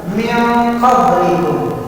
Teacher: Nun mati ketemu qaf, maka nunnya hurufnya tidak dibaca jelas tetapi mendengung. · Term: ikhfa